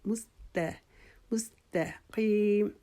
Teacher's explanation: مستا کو بھی میم سین تا, یہ آپ نے تینوں حروف جو ہیں وہ باریک پڑھنے ہیں